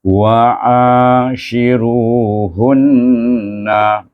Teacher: Bukan idgham, dengungkan dia dengan dua harakat.